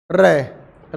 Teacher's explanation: उसको थोड़ा लंबा बोलना, रे बोलते हो ना तो हल्की सी अपनी जीभ ऊपर नीचे होती है, रे हल्की सी आती है। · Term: लुंठित व्यंजन